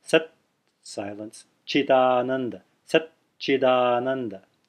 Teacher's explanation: There's a gap there. There's a pause there, which is really the extending of the first consonant in a silent manner.